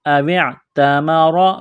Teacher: را کو موٹا کرنا ہے زبر کی وجہ سے